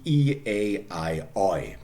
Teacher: Okay, first of all, starting with the palatal diphthongs, which mean those diphthongs which in RP end in the palatal vowel E, more or less. So where the tongue is put forward.